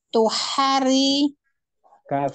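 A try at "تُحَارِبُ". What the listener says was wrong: h-nya jangan dipanjangin Bu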